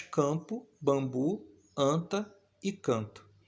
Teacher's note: este fonema AN, fonema vogal nasal, vai aparecer nas palavras campo, bambu, anta e canto